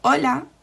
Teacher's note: the h is very very rarely pronounced